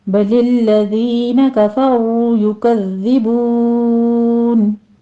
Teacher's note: بَلِ الَّذِينَ كَفَرُوا يُكَذِّبُونَ، بَلِ الَّذِينَ لام کے پر تشدید ہے، آگے دال کو نرمی سے پڑھتے ہوئے یا مدہ ادا کر دیں گے، 2 کاؤنٹ کرنا ہے۔ کفروا میں را مفخم پڑھتے ہوئے واو مدہ ادا کریں گے، ہونٹوں کو پراپر گول کر لیجیے